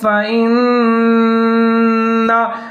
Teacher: نون مشدد ہے تو یہاں پر ادغام کریں گے غنے کے ساتھ